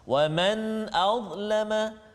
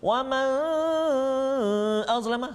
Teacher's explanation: Contoh pada ayat 114 lagi, pada kalimah permulaan kalimah ataupun permulaan ayat 114, wa man azlama, kat situ nun mati bertemu dengan hamzah, hukum dia izhar halqi, tak boleh dengung, tiba-tiba kita baca dengung, wa man azlama, salah.